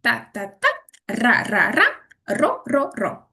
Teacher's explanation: Барабанщик. Кінчик язика постукує за верхніми зубами.